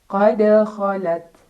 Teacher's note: Dal yang sukunnya sukun asli dan berada di tengah-tengah bacaan maka cara bacanya dipantulkan tapi pantulannya kecil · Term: qqal